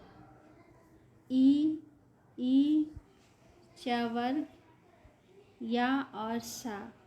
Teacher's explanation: यह सभी वर्ण ताल से बोले जाते हैं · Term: तालुक